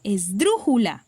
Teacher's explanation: Entonces, podemos identificar que el sonido fuerte el tono fuerte de voz está en dru